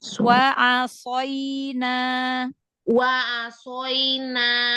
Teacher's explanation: Huruf ain buka lagi, shad jangan masuk ke hidung.